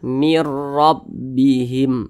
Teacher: Nah, jadi tidak didengungkan. Jadi jangan ditahan suaranya. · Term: idgham bila gunnah